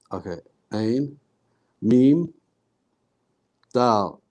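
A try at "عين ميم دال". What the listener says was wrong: أحسنت.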